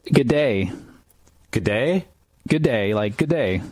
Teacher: general purpose informal greeting pronounced good day with flattened vowel sounds